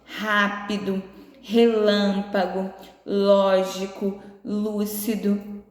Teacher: que em todas essas palavrinhas a sílaba tônica é a antepenúltima a sílaba que você pronunciou com mais força é a antepenúltima · Em todas elas, a sílaba tônica é a antepenúltima. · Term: proparoxítonas